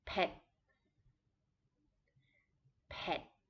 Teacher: this is a low tone so it will be a little bit shorter